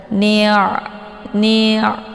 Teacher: Cara baca ainnya yaitu dialirkan setengah saja, jangan ditekan ya, tapi dialirkan dulu setengah. Ni', jadi bukan ditekan. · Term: ain sukun